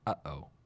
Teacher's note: The glottal stop is a closing of the back of the throat which cuts off air, like the pause in the English term, uh-oh.